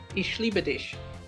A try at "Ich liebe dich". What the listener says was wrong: You pronounce it sh and not ich.